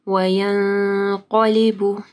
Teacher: نون ساکن کے بعد قاف ہے، یہاں پہ اخفا غنہ ہوگا، اور قاف کیونکہ موٹا حرف ہے تو ایک غنہ بھی موٹا ہوگا